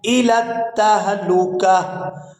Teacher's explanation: تا جو ایک آنکھ والی آپ کو نظر آ رہی ہے یہ ہا کے اندر کنورٹ ہو جائے گی وقف کی صورت میں تو یہاں کاف کو ہا ساکن کے ساتھ ملائیں گے، کاف